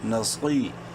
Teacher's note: صاد bold کریں گے اور ساتھ ہی 1 الف کے برابر لمبا بھی کریں گے یا مدہ کی وجہ سے